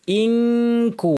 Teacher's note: করতে হবে খেয়াল করে ইনকু নুন সাকিব এবং কাফ ইখফার হরফ জিহ্বাকে কাফের মাখরাজে পুরোপুরি লাগিয়ে নাক থেকে গুন্না